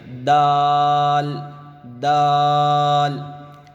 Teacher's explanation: اس کو بھی ادا کرتے وقت اس کا اور تا کا دونوں کا مخرج ایک ہی ہے، زبان کی نوک اوپر کے دانتوں کے جڑوں کو لگنا چاہیے